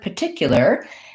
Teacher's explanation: the word particular has second syllable stress and so what that means is that the tick syllable has a clear vowel and is held a little bit longer than the others